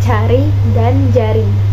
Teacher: dilafalkan dengan daun lidah ditempelkan pada langit-langit keras dan kemudian dilepas secara perlahan sehingga udara lewat dengan menimbulkan bunyi desis. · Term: konsonan afrikat palatal